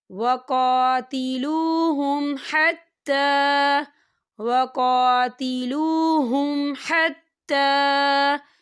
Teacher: وقاتلوہم، دیکھیے وقا، کاف کے پر کھڑی حرکات ہے تو اسے ہم دو حرکت کی برابر کھینچیں گے، اور وقاتلوہم، یہاں دیکھیں میم ساکن ہے اور میم ساکن کے بعد ہا آ رہا ہے، تو یہاں پر اظہار شفوی ہوگا اور ہم اسے بنا غننے کے پڑھیں گے۔